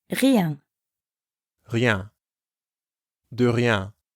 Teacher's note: De rien literally means of nothing, but it's basically the same as saying it was nothing or don't mention it. Notice how rien has the French R sound, which comes from the back of the throat, and ien, the nasal sound you hear in bien.